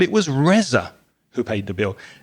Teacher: so if I say it was Reza who paid the bill you can hear me stress Reza because that's the emphasis I want to give